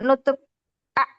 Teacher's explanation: Ini tidak boleh terangkat, ya. Lidah terdorong ke belakang tetapi tidak tertutup sepenuhnya, 'a'. Nah, jika ini tertutup, 'a', ini tertutup, 'a'.